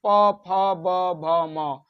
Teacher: कहां टच कर रहा है? ओष्ठ टच कर रहा है।